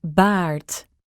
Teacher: you can also use the American R at the end of a word